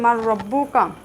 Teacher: নুন সাকিনের পরে র শব্দটি আসার কারণে এখানে নুন সাকিন কিন্তু উচ্চারিত হয়নি। আমরা মিমকে রয়ের সাথে মিলিয়ে পড়েছি, এক হরফকে আরেক হরফের সাথে মিলিয়ে পড়েছি। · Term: ঈদগাম